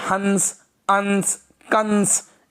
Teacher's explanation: अनुस्वार का उच्चारण करते समय दोस्तों हम लोग नाक का उपयोग ज्यादा करते हैं, ठीक है, मुंह का कम